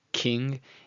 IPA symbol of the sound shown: k